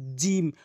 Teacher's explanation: জিহ্বার মাঝখানের যে অংশটা রয়েছে সেই অংশটি উপরে তালুর সঙ্গে লাগাবেন